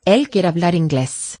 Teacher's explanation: Now the B does weaken because it's after a vowel in hablar, right? It's not hablar.